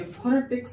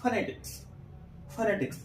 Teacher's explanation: ये जो ओ है ये ओ की ध्वनि नहीं देता। ये अ की ध्वनि देता है। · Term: शॉर्ट अ